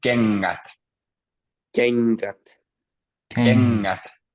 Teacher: in this case, you don't pronounce the G sound at all. There's no G there. It's just kengät.